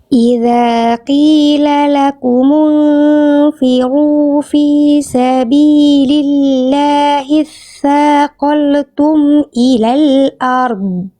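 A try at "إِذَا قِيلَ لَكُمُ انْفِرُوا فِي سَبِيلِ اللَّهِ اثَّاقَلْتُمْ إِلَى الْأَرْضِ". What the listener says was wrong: Lam sukun tidak boleh dibaca memantul ya karena lam enggak punya sifat qalqalah ya.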